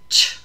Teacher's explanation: If you put your hand in front of your lips, you can feel ch, a little bit of a burst of air as well as a little continuation of air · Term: affricates